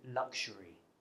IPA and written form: lʌkʒəri: (luxury)